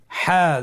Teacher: হার উচ্চারণ কোথা থেকে হয়, কণ্ঠনালীর মধ্যখান হতে